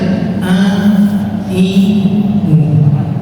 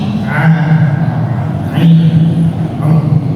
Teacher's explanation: Huruf ain cukup kena tengah tenggorokan, sudah cukup.